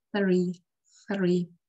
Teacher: Обрати внимание, как слово three произносится. У меня язык между передними зубами и нижними зажат.